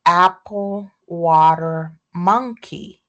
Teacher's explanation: So in apple, water, monkey there's no aspiration.